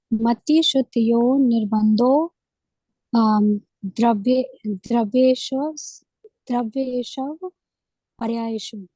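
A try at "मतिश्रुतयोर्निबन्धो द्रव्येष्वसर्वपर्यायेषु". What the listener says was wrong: सर्व पर्यायेषु, सर्व भी है ना? हाँ, द्रव्येष्व, द्रव्येष्व।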